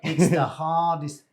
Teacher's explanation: He says artist because the H is dropped in Cockney.